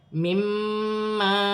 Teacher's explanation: یہاں میم مشدد میں غنہ کیا جائے گا، مما، اور الف مدہ بھی بن رہا ہے.